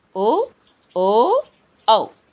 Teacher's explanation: తాలవ్యాలు అంటారు మరి కంఠోష్టములు అవేంటి కంఠం మరియు ఓష్టం అంటే పెదవులు కాబట్టి కంఠం మరియు పెదవులు నుండి పుట్టినవి ఈ రెండిటి సహాయంతో పలికేవి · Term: కంఠోష్ఠములు